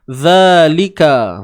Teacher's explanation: zal baris atas za, keluarkan hujung lidah sikit je di antara 2 gigi. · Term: huruf zal